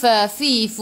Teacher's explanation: gigi atas menyentuh perut bibir bawah, dan sifat hurufnya hamas, kena ada angin.